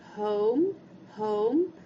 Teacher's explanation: Aqui também a gente vai ter o som longo, home, home, e a gente não ouve o E do final